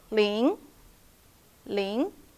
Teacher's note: it's a rising tone from low to high rising